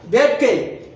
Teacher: வேட்கை என்னும் சொல்லின் ஐகார குறுக்கம் என்பது எத்தனை மாத்திரைனா 1 மாத்திரை. அப்ப ஒரே ஒரு மாத்திரை தான் சொல்றாங்க.